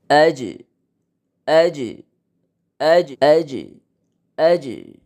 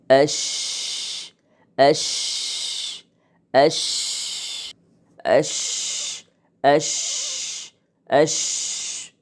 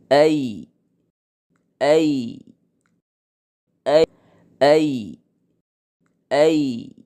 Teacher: জিহ্বার মধ্যভাগ সোজা উপরে তালুর সাথে লাগিয়ে উচ্চারিত হয় জিম, শিন, ইয়া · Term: ওসতে লিসান